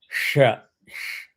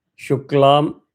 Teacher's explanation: for the first sh, you hold your tongue up against the palate and you blow air. Sh, the tongue goes up and presses.